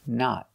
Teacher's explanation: Use a stop T at the end and a short O.